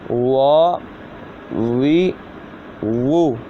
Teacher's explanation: واو پڑھتے وقت خاص کیا رکھنا ہے کہ یہ دونوں ہونٹوں کی گلائی سے ادا ہوتا ہے